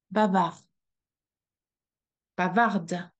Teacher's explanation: The last sound we should hear is the R, which is lost in the throat. Bavard. Bavarde.